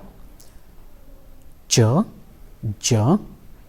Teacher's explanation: the active articulators are the tip, the blade and the front of the tongue, and the passive articulator is usually the part of the roof of the mouth which is between the teeth ridge and the hard palate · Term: post alveolar consonants